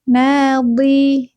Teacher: Jadi bukan di tapi di nadi. Pinggir lidah menyentuh ee gigi graham atas suaranya memanjang. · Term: Istitolah